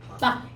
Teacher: 입성은 짧게 끝나는 소리야. 빨리 끝나는 소리. 그러니까 입이 닫혀버린다는 얘기야.